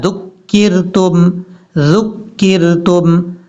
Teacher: ذال کو بغیر سیٹی کے ساتھ پڑھنا ہے، سیٹی کے ساتھ نہیں پڑھنا